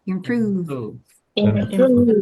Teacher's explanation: ini bukan F, tapi ini V. Jadi lower lip Anda yang berperan besar.